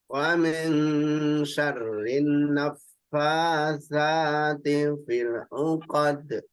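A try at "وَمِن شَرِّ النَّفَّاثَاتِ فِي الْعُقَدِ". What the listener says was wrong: Syarrin naffa. Dengungannya kurang panjang. Syarrin naffasa.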